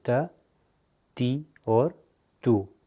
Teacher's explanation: دیکھیے آپ زبان، ایک اور طریقہ آپ کو بتائیں کہ اوپر والے دانت جو ہیں اس کے پیچھے لگے گا تا، مگر موٹا پڑا جائے گا۔ زبان جو ہے اوپر والے دانتوں کے پیچھے لگتی ہے